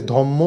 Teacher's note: অবশ্যই দুবার ম ব্যবহার করে যখন ঠোঁট দুটোকে এক জায়গায় নিয়ে এসে ধম্ম বলছি, খুব সহজেই আমরা উচ্চারণ করে দিতে পারছি। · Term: সমীভবন